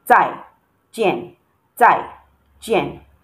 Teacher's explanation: You can see the two tones here are the falling tones. Tai jian, tai jian, and not the flat tone.